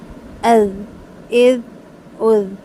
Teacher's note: اس کی آواز کو بند نہیں کریں گے، تھوڑی سی آواز چلے گی، از، از، از۔